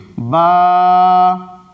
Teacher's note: یہ جو زبر کو ہم کھینچ رہے ہیں یہی الف کی آواز ہے۔ با کے متعلق میں نے بتایا تھا کہ با دونوں ہونٹوں کے تر حصے سے مل کر کے ادا ہوتا ہے، یہ بھیگا والا حصہ جو ہے جب آپس میں مل جاتے ہیں تو تر حصے سے با ادا ہوتا ہے۔